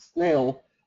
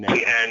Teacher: So in English, as happens in a lot of languages, in a consonant cluster, like at the beginning of the word snail, that N in snail is shorter than the N in nail.